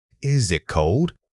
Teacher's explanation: When asking, is it cold? Your pitch must rise noticeably, particularly on the initial is. This immediate upward movement alerts the listener that they need to prepare for an answer.